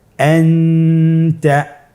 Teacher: নুন সাকিন অথবা তানবিনের পরে ইকফার 15টি হরফের যে কোনো একটি হরফ আসলে তাহলে নুন সাকিন তানবিনকে নাকের ভিতরে লুকিয়ে গুণনার সহিত পড়তে হবে। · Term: ইখফা